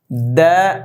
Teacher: দাল হরফটা জিব্বার আগা দাঁতের গোড়া